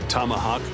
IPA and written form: ˈtɒməhɔːk (Tomahawk)